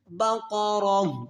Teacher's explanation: یہاں پر سٹاپ کریں گے تو اس گول تا کو وقف کی صورت میں ہاتھ ساکنہ کے ساتھ بدل کر پڑھیں گے۔